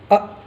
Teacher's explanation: हमज़ा, अ, जो हलक़ के सबसे निचले हिस्से से पढ़ना